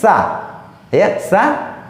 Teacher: Dia mengangkat ujungnya ke gigi seri atas sehingga yang keluar bukanlah huruf sin, melainkan tsa